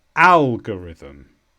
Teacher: This is a noun and the stress is on al.